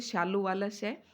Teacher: जैसे शालू वाला श, तो ये तालव्य उच्चारण होता है।